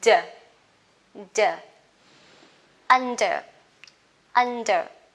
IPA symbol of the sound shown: d